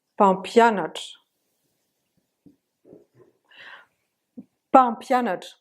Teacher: Presque vous entendez pas le M. Papianat. Papianat.